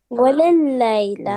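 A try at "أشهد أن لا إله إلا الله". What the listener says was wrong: واو نوٹ ہے. واو نہیں ہے. اشہد اللہ الہ.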